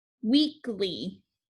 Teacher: c is making the sound the second e is not weekly that first syllable is accented